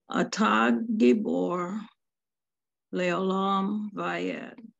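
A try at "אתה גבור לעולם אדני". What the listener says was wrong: There's no Vayed there. This is Adonai. Adonai.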